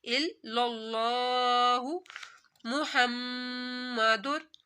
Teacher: अल्लाह के ऊपर खड़ा मद है तो लंबा किया जाएगा, और लफ्ज़ अल्लाह से पहले ज़बर आ रहा है तो लफ्ज़ अल्लाह को मोटा पड़ा जाएगा